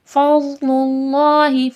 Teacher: اللہ لفظ سے پہلے پیش ہے، اللہ لفظ موٹا کر کے پڑھا جائے گا